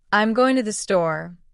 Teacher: you would emphasize going and store more than I'm and to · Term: stress